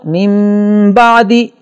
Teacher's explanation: نون ساکن کے بعد با آ رہا ہے تو یہاں اس طرح کا غنہ ہوگا کہ اس میں میم کی آواز پیدا ہو جائے